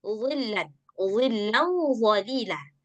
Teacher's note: dha dia punya sifat isti'ala dan punya sifat itbaq, sehingga ketika kita mengucapkan huruf dha dia selalu tebal